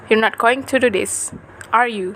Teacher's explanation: the intonation of reference polarity text questions works as follows if we form a separate ip on the tag question and place a falling tone on it